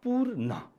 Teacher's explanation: णको उच्चारण नगरेर नको उच्चारण गर्छौँ। त्यसकारणले यसको उच्चारण पूर्ण।